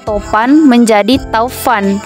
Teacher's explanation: kata Topan menjadi Taufan vokal o menjadi au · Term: diftongisasi